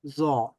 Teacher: জিহ্বার অগ্রভাগ সামনের উপরের দুই দাঁতের অগ্রভাগের সাথে টাচ করে ব্যবহার করতে উচ্চারণ করতে হবে এবং সাউন্ডটা নরম হবে।